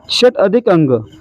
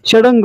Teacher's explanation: ट आणि अ एकत्र आल्यावर काय बनणार आहे, ड बनणार आहे. मग या ठिकाणी काय होतं, षडंग होतं, म्हणजेच पर्याय 3 आपलं उत्तर आहे.